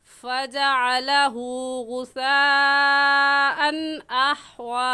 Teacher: इस मद को मद्दे मुत्तसिल और मद्दे वाजिब कहेंगे और इसको 4 अलिफ के बराबर खींच कर पढ़ेंगे